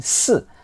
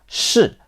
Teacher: These sounds are produced by curling the tongue back, which is not a feature of Cantonese pronunciation. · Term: retroflex sound